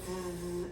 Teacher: 즈 하면 손이 울리죠. 얘는 울림 소리예요.